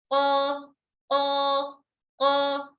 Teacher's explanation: Suara kita, pangkal lidah kita naik dan suara kita naik ke atas. Suara naik namun tidak terkepung di langit-langit mulut ya. · Contoh kita ucapkan huruf qaf. Huruf qaf makhrajnya pangkal lidah dengan langit-langit atas bagian yang lunak ya.